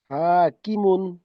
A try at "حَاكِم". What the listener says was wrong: ہا صحیح نکالو نا، حاکم. ہاں، درمیان حلق سے نکالو.